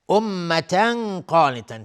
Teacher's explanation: امتا قانتا، تنوین بهش قاف اخفای حقیقی و قاف از حروف استعلاء غلیظ تلفظ میشه